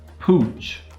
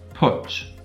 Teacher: The vowel qualities are different, but pooch is long and putch is short.